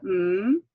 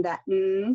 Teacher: all of the nasals are voiced all of them are voiced it's like singing